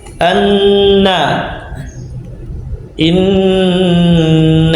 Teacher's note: ujung lidah yang membentur langit-langit atas di bawah makhraj huruf lam, darinya keluar huruf nun